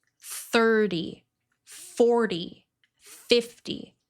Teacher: When you have numbers that end with TY, you want to put the stress on the first syllable.